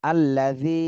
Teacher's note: জিতে এক আলিফ টান দিতে হবে, জেরের বামে জজমালা ইয়া মদের হরফ